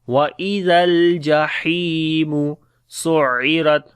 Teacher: Zal we read in soft sound, on the Lam we make Tawassut quality. He we long due to Ya Madda.